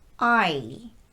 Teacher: is also made up of two sounds ah plus e I you start by dropping your tongue into an ah shape and then quickly transitioning to the e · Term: long i